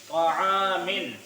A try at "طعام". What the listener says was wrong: यहाँ भी आइन की आवाज आनी चाहिए और यहाँ भी. طعامل जरा जोर से बोलो.